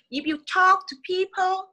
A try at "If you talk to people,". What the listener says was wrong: chậm lại nè. If you rõ ra không có đọc nhanh. If you không có đọc vậy. If you nói rõ tất cả các chữ ra nha.